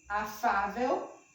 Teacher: Afável é acentuado porque é paroxítono, a sílaba tônica é aqui, ó. Afável, a sílaba tônica é Fá